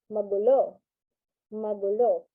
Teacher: it has a sudden falling intonation at the second syllable, which is gu